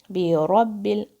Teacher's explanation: برب الفلق، بی با کا جو کسرہ ہے اس کو اپنے کلیئر ادا کرنا ہے، بے رب ال نہیں بولنا ہے، بی اور ایک ہی حرکہ ہے اس کی. بی رب ال، را کی آواز بھاری ہے، را کی آواز آپ کو اوپر کی ڈائریکشن میں فیل ہوگی. بی رب ال، با پہ شدہ ہے، یہ آپ کو فیل ہونا چاہیے کہ یہاں پہ شدہ ادا کیا ہے.